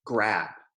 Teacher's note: So if we take a word like grab, that B is voiced. It makes my throat vibrate.